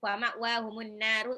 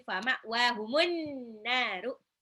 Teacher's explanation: Alif lam syamsiyah, an-naru ini adalah gunnah dan mad tabi'i. Karena dia nun tasdid ya.